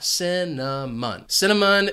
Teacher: Notice that C is going to have an S sound, and it's followed by the schwa,